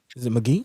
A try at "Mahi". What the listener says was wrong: No, it's you don't pronounce the G. It's